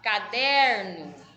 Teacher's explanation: o der é a sílaba mais forte.